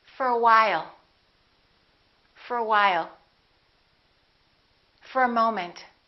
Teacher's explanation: Let's look at what happens to for. We reduce the O and it becomes a.